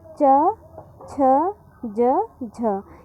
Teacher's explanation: चा वर्ग पूरा हमारा तालव्य व्यंजन होता है क्योंकि इनका उच्चारण स्थान हम कहाँ से करते हैं? तालु से करते हैं।